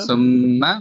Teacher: সুম্মা মিমের মধ্যে গুণনা হচ্ছে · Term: গুন্না